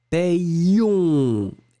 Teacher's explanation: Et après, vous allez vraiment prononcer le I et le on, hein, puisque le O et le N, ça va être de la nasale. · Et vraiment, vraiment, vous insistez sur le ion.